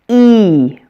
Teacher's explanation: It almost sounds like I say E twice, or maybe that another E or a Y sound is added to make it a diphthong. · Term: Long E